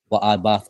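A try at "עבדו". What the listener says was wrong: So not I bath, but I bad. I bad wa. So wa I bad wa.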